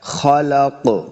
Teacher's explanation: یعنی بغیر غنہ کے پڑھنا ہے، من خلق، من خلق، پھر خو اور قاف دونوں حروف مستعلیہ سے ہیں، دونوں کو موٹا پڑھنا ہے